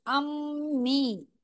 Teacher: अम एक बार मीम की आवाज आई फिर वापस से मी के साथ में भी एक बार म की आवाज आई तो डबल आवाज आएगी